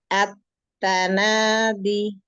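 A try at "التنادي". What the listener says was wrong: Tipiskan lagi taknya, kasih hama sedikit. At-tanadi. D-nya jangan panjang.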